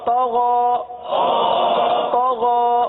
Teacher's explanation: طا کو پر پڑھیں گے. طا حروف مستعلیہ میں سے ہے.